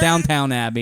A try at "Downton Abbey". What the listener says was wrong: It's Downton. It's not Downtown Abbey. No, it's Downton. It's Downton Abbey. TON. Downton Abbey.